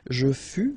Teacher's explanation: keep in mind that final S is not pronounced